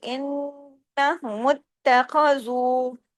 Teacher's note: نون پہ تشدید ہے، ڈبل نون ہے، بڑا غنہ ہوگا، آواز دیر تک ناک میں چھپے گی